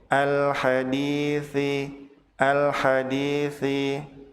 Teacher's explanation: di pada kata al-hadithi, dibaca panjang 2 harokat disebut sebagai mad tabi'i.